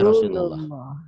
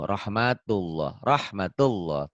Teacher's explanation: Lafaz Allah dibaca tafkhim tebal berbunyi O Allah seperti bunyi O bila didahului oleh huruf yang berbaris patah atau domah